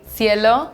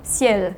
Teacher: Spanish just adds a vowel that you can hear and French doesn't.